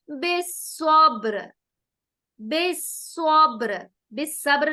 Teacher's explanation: اب یہاں پر سواد کو ہم موٹا کریں گے